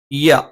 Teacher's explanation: നാവിന്റെ മധ്യഭാഗം മേലെ അണ്ണാക്കിൽ വെച്ചുകൊണ്ടാണ്